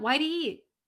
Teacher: It's not completely gone because our tongue still goes to the same position as it would when we pronounce a T, but we just hold it.